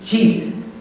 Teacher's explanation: They are both produced the same way. J has tone. You should feel vibration in the throat. J. J as in Jeep.